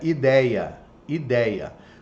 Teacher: Ou muitas vezes eu posso chamar ele de ditongação, porque esse i seria mais estendido. Parece que eu tenho dois i's dentro de uma mesma palavra. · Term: falsos hiatos